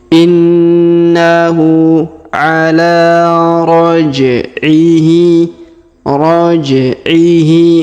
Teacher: huruf Qalqalah ya huruf pantul karena huruf ja berharakat sukun maka kita pantulkan